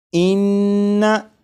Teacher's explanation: लेकिन अब जो पढ़ना है आप इस पर गौर करिएगा कि नून को जब पढ़ेंगे, इस नून मुशद्दद को जब पढ़ेंगे तो ज़बान तालू से लगी होगी। आप गौर करिएगा कि नून मुशद्दद की अदायगी के वक्त ज़बान तालू से लगेगी